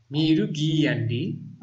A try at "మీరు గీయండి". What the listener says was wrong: Actually it has a long vowel sound అండి. So you need to read like this. మీరు గీయండి.